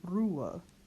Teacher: U before an H will be pronounced the closed U, oo. Then we don't pronounce this H in the middle of the word, and we just go right to the schwa. So we get Ruhe.